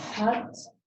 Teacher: La H es aspirada, como en inglés hot.